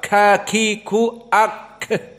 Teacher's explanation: huruf alhams dia itu di saat disukunkan maka keluar nafas